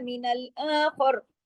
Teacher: खा के साथ रा को भी मोटा करके छोड़ना है , क्यों, इसलिए कि खा की जबर का जो असर है